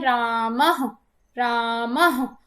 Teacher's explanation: और जो विसर्ग है, अर्थात जब हम संस्कृत में कहते हैं रामः रामः, तो ह जो बाद में विसर्ग का जो उच्चारण हो रहा है वो हमारे कंठ से होता है